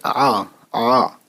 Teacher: عین کی آواز بھی جب زبر لگتا ہے تو آ ہو جاتا ہے، لیکن حلق سے